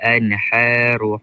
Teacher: Ha dari dalam. Dari dalam tekak.